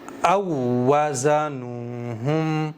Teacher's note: حمزہ کو ڈائریکٹ واو کے ساتھ میں ملایا ہے اس والے واو کے ساتھ میں، اور اس کو ڈبل ٹائم پڑھا ہے کیونکہ تشدید ہے۔